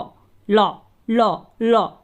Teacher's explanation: जीभ मुड़ रही है, दोनों साइड से हवा निकल रही है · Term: पार्श्विक व्यंजन